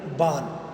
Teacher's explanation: बढ़ते हुए ण जो त त वर्ग का पंचवा अक्षर है उस ण के स्थान पर न का प्रयोग होता है